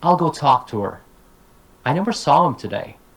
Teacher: the h- is just dropped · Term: weak forms